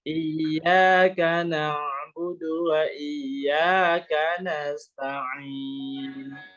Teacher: kalau ain dari tengah tenggorokan